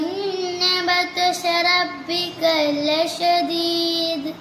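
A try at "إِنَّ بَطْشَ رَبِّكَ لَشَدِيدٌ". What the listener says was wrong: ഇവിടെ നൂന് ഷദ്ദുണ്ട്, അവിടെ ശ്രദ്ധിക്കണം. പിന്നെ ബത്വശ, ഇവിടെ ത്വാ ആണ്, അവൻ ശ്രദ്ധിക്കണം. ഇന്ന ബത്ശ റബ്ബിക ലശദീദ്. ലശദീദ്.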